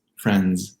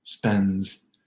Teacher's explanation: D sandwiches almost always occur when the letter N comes right before a D. So N plus D plus any other consonant sound will often remove the active release of this D sound, where you would otherwise hear it in a 3-consonant cluster.